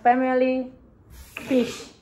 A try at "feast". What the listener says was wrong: F-E-A. Not fish.